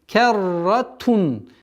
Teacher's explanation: К мягкий звук, ра твердый. Керратун. Здесь у нас правило ясности.